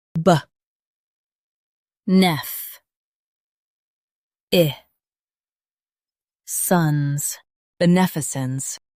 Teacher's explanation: stress nef and keep sons soft